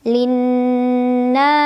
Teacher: Ada nun musyaddadah atau gunnah musyaddadah karena nunnya bertasydid. Cara membacanya didengungkan, ditahan kurang lebih 2 harokat. Linna. Na mad tabi'i karena ada alif sebelumnya fathah, cara membacanya dipanjangkan 2 harokat.